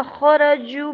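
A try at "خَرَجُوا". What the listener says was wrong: अब इसने ये देखें आप खाराजू को इसने गलत पढ़ा है, खाराजू था, आगे वाव तो इसने खाराजू पढ़ा है, खैंचा नहीं है।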